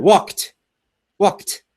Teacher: when we speak quickly, it can be difficult to hear that little t at the end of the word